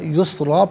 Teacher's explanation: یسرن وقف کی صورت میں یسرا پڑھیں گے